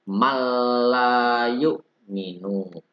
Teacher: Huruf nun sukun diikuti atau bertemu dengan huruf lam. Nun sukun diikuti dengan huruf lam. Cara membacanya ditahan, ditekan 2 ketukan. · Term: idgham bila guna